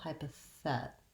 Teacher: my length and my clear vowel e is on this middle third syllable · My length and my clear vowel is on this middle third syllable, hypothet. And I'm going to write that T as the letter D because this is a flap T here, which means that Americans are going to pronounce that without using the T sound, but rather like a light D sound.